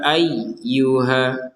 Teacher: mohon maaf ya ayyuhanasubudu rbakum di sini ada ya bertasydid ya ya bertasydid ini harus kita tekan